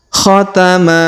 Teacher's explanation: Huruf ma kita panjangkan 2 harokat karena di depannya terdapat alif ya